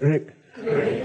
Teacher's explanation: it's not done with your front teeth on your lower lip. It's done by flopping your tongue inside. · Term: roll the R